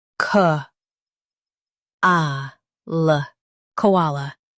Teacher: Emphasize ah and keep l light.